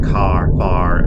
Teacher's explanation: we don't sound any final R in words like car far Etc